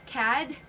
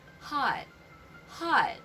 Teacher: no extra sound no letter d sound no strong sound just a stopped letter t